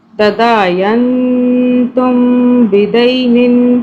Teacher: اور یہ میم کا جو قاعدہ ہے، میم ساکن کا، اس کا قاعدہ یہ ہے کہ اس میں میم ساکن کے آگے جب با آ جائے گا تو ہم نے، یعنی کہ میم پر ہم نے اخفاء کرنا ہے، میم کو ہم نے 2 سے 3 سیکنڈ کے لیے چھپانا۔ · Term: اخفاء شفوی